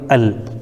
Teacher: تو یہاں پر لام ساکن ہے تو ساکن والے حرف کو ہم پیچھے والے حرف یعنی حمزہ سے ملا کر کے پڑھیں گے